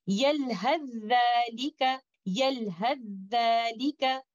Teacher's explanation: we will do idgham kamil, and we will recite this example by going directly to letter Zal